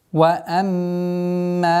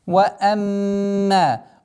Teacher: Удержание назализации в размере двух огласовок.